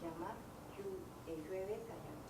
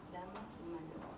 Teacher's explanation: Este sonido palatal se produce de manera semejante a la lateral alveolar L